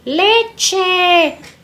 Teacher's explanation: Pero estudios de articulación en la vía pública demostraron que el ápice de la lengua desciende al articular la ch cuando ésta se encuentra entre dos vocales medias